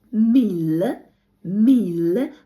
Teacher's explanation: Л В кінці наче з м'яким знаком